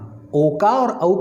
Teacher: इन दोनों का उच्चारण स्थान, ओ का और औ का उच्चारण स्थान कंठोष्ठम, कंठोष्ठ होता है, कंठ और होंठ